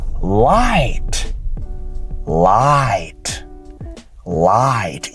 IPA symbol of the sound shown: aɪ